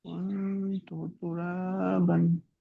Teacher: নুন সাকিনের, নুন সাকিনের পরে হুরফে ইকফার মধ্যে 15টি অক্ষরের মধ্যে তা এসেছে, সেহেতু আহ, নুন সাকিনকে নাকে তুলে এক আলিফ পরিমাণ গুণনা করে পড়তে হবে